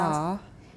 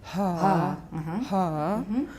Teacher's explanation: you'll probably find that the breathiness extends into the vowel.